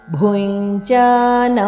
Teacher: ಭೂ ಇಲ್ಲಿ ಮಹಾಪ್ರಾಣ ಭುಂಜ ಅನುನಾಸಿಕ